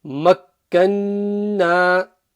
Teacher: There's a noon mushaddada gunna there.